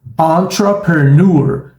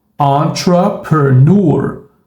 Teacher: Então a gente tem um som neutro, que é o som do schwa, na combinação tr, e depois na sequência pr. E aí vem nur. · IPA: ə